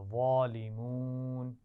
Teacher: وَأَنتُم کے نون ساکن پر بھی غنہ ہے، اور ظالمون میں وا کو موٹا پڑھنا ہے اور اس پہ کھڑا زبر ہے تو کھینچ کر بھی پڑھیں گے. اور اسی طرح اس لفظ میں واو مدہ بھی ہے، ظالمون.